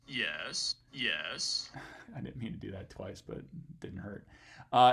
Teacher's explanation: you can hear me go down to kind of the low f0 trough here actually get into a bit of creaky voice